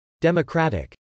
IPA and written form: d.ɛməkrˈætɪk (democratic)